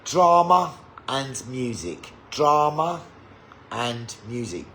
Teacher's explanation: The R sound will just happen, okay? And then you have an intrusive R where there is no R in the word before the next word